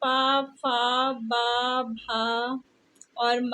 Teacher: ये जो है ओठ से उच्चारित होते हैं।